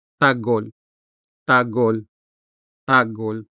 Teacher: The stress falls on the first syllable, tag, making the second syllable hol unstressed, where you can also find the consonant ha.